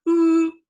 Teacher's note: O, O, ooh. Notice with ooh, say ooh, your tongue's really high